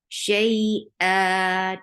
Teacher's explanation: Shay is two counts long because this is a harf lean, and it is converted into mad iwad. You are extending the sound of tanween into two counts a long vowel. So when you are exchanging this the sound and exchanging something, you say iwad.